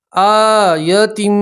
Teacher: یا تنوین کا میم کے اندر ادغام کریں گے اور غنہ کے ساتھ پڑھیں گے۔ آیتم ما الف مدہ اس لیے ایک الف کے برابر کھینچ کر پڑھیں گے۔